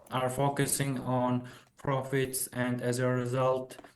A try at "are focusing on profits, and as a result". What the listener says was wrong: Profits, and as a result, so intonation now has dropped again.